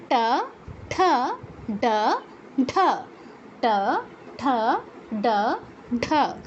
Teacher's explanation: তালু আর কণ্ঠের মাঝখানে যে অংশটা, এটা হচ্ছে মূর্ধা। তো ট বর্গের অক্ষরগুলো উচ্চারণের সময় জিহ্বাটা একটু গোল হয়ে ফোল্ড হয়ে পেছনে যায়, কণ্ঠের ঠিক আগে যায়।